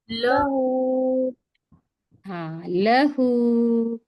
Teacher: लाम के ऊपर जबर की हरकत इसको जल्दी पढ़ेंगे, थोड़ा भी ना खींचेंगे। हा के ऊपर उल्टा पेश है तो इसको एक अलिफ के मिकदार खींच कर पढ़ेंगे।